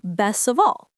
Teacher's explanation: The T disappears because the next sound is soft. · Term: connected speech